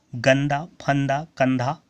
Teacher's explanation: अनुस्वर, ठीक है, जब इसका उच्चारण किया जाता है तो वायु नाक से निकलती है। इसका उच्चारण भी जोर से होता है।